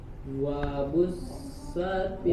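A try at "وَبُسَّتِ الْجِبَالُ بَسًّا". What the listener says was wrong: Wa bus, lebih ditajamin suara desisnya. Wa bussa. Nah, bassa seperti itu, ya. Lebih ditajamin itu berarti lebih disempitin lagi ruang untuk keluar udara. Wa bussatil jibalu bassa.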